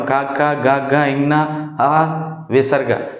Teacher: మనం కంఠం సహాయంతో పలికే వాటిని కంఠ్యాలు అంటాం